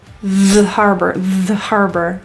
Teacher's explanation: THE is reduced. Again, the vowel is gone. So we can attach it to harbor.